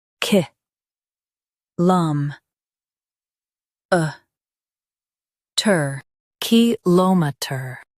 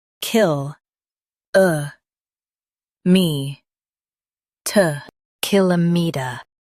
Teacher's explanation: In US, stress l o m. In UK, stress k i l.